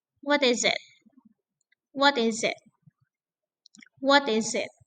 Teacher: Jadi untuk open questions ini falling intonations